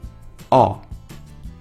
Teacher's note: Es una O abierta, así que tendréis que hacer la forma de la O con la boca, pero intentando pronunciar una A.